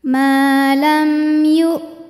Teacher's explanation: mim panjang dua harakat maam kemudian ada hukum izhar syafawi sebab mim sukun menghadapi huruf selain mim dan ba yaitu huruf ya maka mim kita bunyikan dengan jelas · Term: idhar syafawi